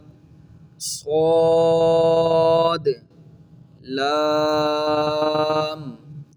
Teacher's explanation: یہ صاد حروف مستعلیہ میں سے ہے، اس کو ہم نے پر پڑھنا ہے یعنی موٹا پڑھنا ہے